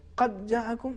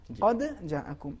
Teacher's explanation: دال کو جیم میں ادغام نہ کریں، متصل نہ کریں، اس کو الگ تلفظ کریں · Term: قلقلہ